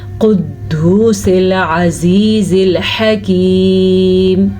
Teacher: اس کو اگر ہم کاف پڑھیں گے تو غلط پڑھیں گے کیونکہ وہ باریک کاف بن جائے گا، جبکہ یہ موٹا قاف ہے، پر پڑھے جانے والا قاف ہے